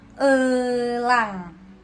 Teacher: E madya atas tengah dengan kondisi bibir semi tertutup. kata yang dihasilkan seperti kata elang. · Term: vokal E